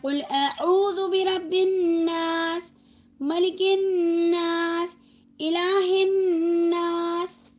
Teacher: سب کے ناس کے اندر کیا کرنا ہے؟ ہمیں غنہ لے کر چلنا ہے